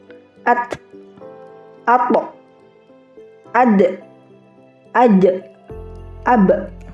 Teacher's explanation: Jadi semua tertahan tidak dialirkan suaranya